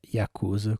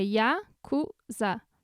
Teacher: o japonês não tem sílaba tônica. Então, quando você vai ler, você lê do jeito que a sílaba é lida.